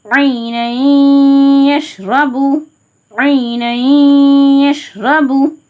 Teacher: நூன சவுண்ட இன்ன சவுண்ட முற்றில் நீக்கிட்டு யா சவுண்ட சேர்த்து மல் குன்னறதுக்காக ஒரு அலிஃப நிகர முக்கல குா செஞ்சு ஓதணும் உஜுன்த [தொண்டையைச்